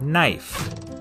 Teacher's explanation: In Middle English, it was pronounced knief, but after the vowel shift, the K became silent